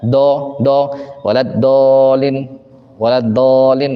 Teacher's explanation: enggak pakai istilla enggak pakai itbaq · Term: kesalahan umum